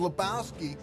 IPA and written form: ləˈbaʊski (Lebowski)